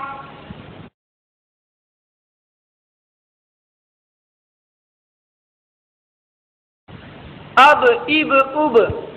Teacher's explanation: جب ان پر جزم ہو تو ان کو پڑھتے وقت ان کے مخرج ٹکر کھا کر الگ ہو جاتے ہیں۔ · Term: قلقلہ